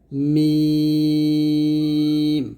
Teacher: মিম দুই ঠোঁট মিল করে আমরা উচ্চারণ করব মিম পাতলা হবে নুন জিহ্বার আঘাত তারও বরাবর পরের তাল সঙ্গে